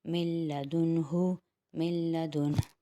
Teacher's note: نون ساکن کا نہ ہم جوڑ میں نام لیں گے نہ ہی وصل میں، اور مشدد حرف یعنی لام کو ہم میم سے ملائیں گے۔ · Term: ادغام بلا غنہ